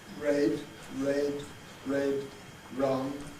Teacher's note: we can have a little lip rounding